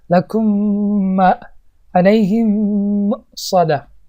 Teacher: وقتی که ما دخول میکنیم همین میم به مقدار یک میم دیگه کشیده میشود. لکم ما علیهم مؤصده، مثل تجدید بر این میشود.